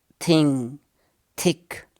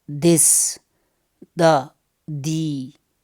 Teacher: The first one of the pair is known as voiceless, and the second one is known as voiced.